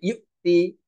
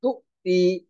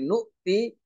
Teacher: উচ্চারণের সময় প্রতিটি আলামতের পরে হামজা থাকার জন্য একটা ধাক্কা আসবে।